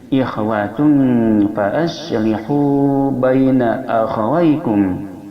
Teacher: Ikhwatum hukumnya ikhfa awsat, samarnya pertengahan di antara samar dan gunnah. Maka cara membunyikannya mendekati dengan huruf an.